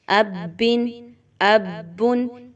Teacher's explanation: just با 2 زبر بن، اب بن، کیونکہ تنوین ہے آخر میں تو ہم اس لیے نون کی آواز کو لاسٹ میں لا رہے ہیں